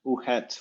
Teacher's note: So probably something like uhet with the unreleased T, then becomes uhe